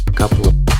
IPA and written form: ə kəplə (a couple of)